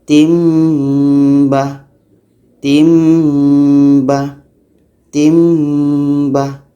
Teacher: dibaca dengung dua harkat · Tanwin hilang tukar kepada mim. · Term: Iklab